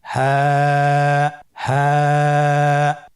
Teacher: হা হরফটি উচ্চারণ ক্ষেত্রে অবশ্যই বারিক হবে এবং 1 আলিফ টেনে পড়তে হবে।